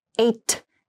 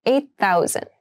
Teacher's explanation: 8,000 8,000 refers to8 1000 of something when you pronounce this the eight and thousand sound like they connect a little bit